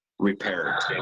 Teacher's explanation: se pronuncia repaired, como con una D al final